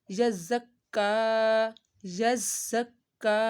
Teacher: ज़ा की सीटी निकाली है और का को एक अलिफ के बराबर लंबा किया है क्योंकि इसके ऊपर खड़ा मद्दा है